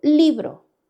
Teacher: ¿dónde la mayor fuerza de voz? En, en la sílaba li. Subrayo esa sílaba li.